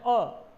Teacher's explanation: मध्य स्वर है अ, जिसमें जिह्वा के दोनों बीच के किनारे सक्रिय हो जाते हैं।